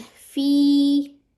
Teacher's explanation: या साकिन था, ठीक है, तो कसरा के बाद, तो इसको आपने 2 काउंट्स कर लेना है